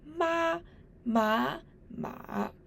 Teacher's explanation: These four words ma, ma, ma are of tones 1, 2, 3, and 4 respectively.